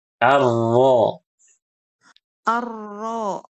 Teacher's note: Eh, ahsanti tapi kurang kurang ini kurang tebal. Ar pangkal lidah naikkan.